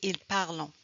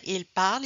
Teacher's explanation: Vous allez parfois entendre des Acadiens prononcer au pluriel le son on.